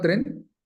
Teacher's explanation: en realidad tiene un inicio complejo porque es consonante consonante vocal consonantes